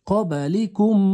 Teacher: Sukunlik mim harfidan soʻng yana bitta mim harfi kelib qolsa, ikkita mimni birlashtirib gʻunna qilib o'qiymiz